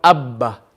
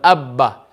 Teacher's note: the ba is double isn't it you can hear the ba being double